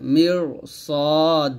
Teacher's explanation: মির সদ আলিফ জবর স মোটা করে